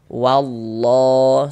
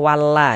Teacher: Huruf lam yang di tengah nih, huruf lam jalalahnya itu kita baca tebal. Eah. Sehingga ini kita baca wallah seperti itu. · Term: dibaca tebal